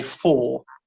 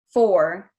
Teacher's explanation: So I would say 4, whereas you would say 4. Difference is at the end of the vowel, your tongue is definitely going up. You can hear a slight R colour in there.